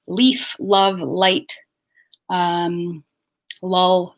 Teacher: in canadian english the l is short it is called a light l at the onset of words or the onset of syllables · you'll hear this push off very gently of the alveolar ridge of the tongue tip, just pushing off, and there's no tension in the back of the mouth